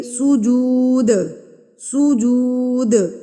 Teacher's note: हमने चार हरकत के बराबर खींच के पढ़ना है नव सुजूद दाल को हम वक की सूरत में कलला करेंगे · للطائفین والعاکفین والرکع السجود، دال کو ہم وقف کی صورت میں قلقلہ کریں گے